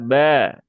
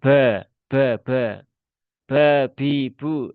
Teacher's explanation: Huruf ba ini ya dia huruf yang sepertinya mudah tetapi bagi sebagian orang ternyata sulit ya terutama ketika harus menghilangkan sifat hames ya karena memang tidak ada hamesnya ya dia sifatnya jaher ya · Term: sifat jahr